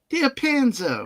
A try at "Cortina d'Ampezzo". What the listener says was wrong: You're still putting it on the wrong syllable.